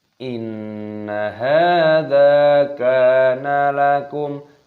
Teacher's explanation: terdapat nun tasdid, hukumnya dibaca gunnah berdengung. Kita dengungkan, tapi perhatikan nunnya di sini itu pendek. Jadi kita harus bisa membedakan dengung langsung dimasukkan ke hanya, jangan inna, tidak boleh innaha.